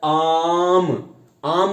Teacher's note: जिसके उच्चारण मुख पूरा खुला जाता है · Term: विवृत